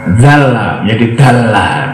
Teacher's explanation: Begitu juga suara zal diganti dengan dal pada dialek lokal.